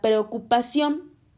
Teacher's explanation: La palabra preocupación lleva acento en la O y es la sílaba tónica que corresponde a la palabra.